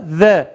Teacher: Peltek olarak Z dili iki dişin arasına koyuyoruz ve Z şeklinde çıkartıyoruz.